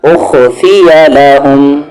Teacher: نون ساکن کے بعد قاف ہے اخفا